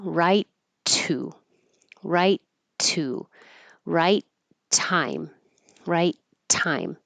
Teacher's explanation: The T will stay like a T if there's another T in a word after it because it's a voiceless sound. Right, you hold that T, right to, right to, right time, right time.